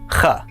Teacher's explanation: It comes from the back of your throat and it's similar to the sound people make when they are preparing to spit. It's not that sound, but it gives you an idea of how to make it.